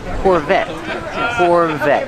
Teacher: The T is a stop T. The E is silent.